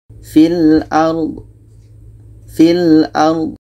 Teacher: Do ini bukan qalqalah, jangan dibesarkan. Fil ard. Itu tidak boleh, terlalu besar jadi qalqalah.